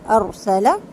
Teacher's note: را ساکن سے پہلے جب زبر ہوتا ہے تو را ساکن کو پر کر کے پڑھا جاتا ہے، کیونکہ ظاہر ہے ہم نے را کو ابھی زبر زیر پیش کے ساتھ تنوین کے ساتھ پڑھا ہے.